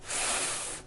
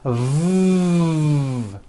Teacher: the F sound is unvoiced and sounds like this F and the V sound is voiced and sounds like this V correctly pronouncing these sounds will make